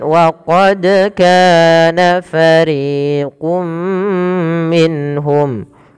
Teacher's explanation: ini ada bacaan qalqalah kembali, yaitu adanya huruf dal yang dipantulkan ketika melafalkannya, dan ini kita namakan dengan qalqalah.